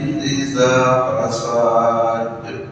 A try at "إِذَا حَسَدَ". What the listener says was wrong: Yang akhirnya ada tadi hasadnya pendek aja. hasad. ya hasad. Karena memang ada beberapa surat yang harus pendek ya. Ya Al-Ikhlas atau Falaq ini dia pendek ya.